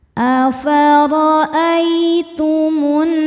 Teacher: ada ya sukun yang sebelumnya berharokat fathah. Cara bacanya dilembutkan atau dilunakan. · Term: huruf lin